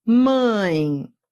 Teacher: Em mãe, veja, eu tenho um ditongo. Eu fui da vogal para a semivogal. Então, repare que o som da semivogal é sempre I.